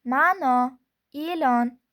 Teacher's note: Tutuq belgisining ikkita vazifasi bor. Agar tutuq belgisi unli tovushdan keyin kelsa, shu unli tovish chozib aytiladi.